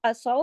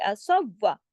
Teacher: स्वाद को उस वाव के साथ जोड़ेंगे जिसके ऊपर तशदीद है।